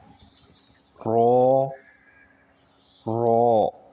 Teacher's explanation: زبان کی نوک اور پشت کا حصہ جب اگلے دانتوں کے اوپر والے مسوڑوں سے ٹکرائے تو یہ لفظ ادا ہوتا ہے